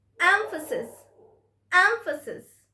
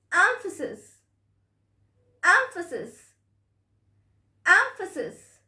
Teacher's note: Yes, the stress is on the first syllable, emphasis.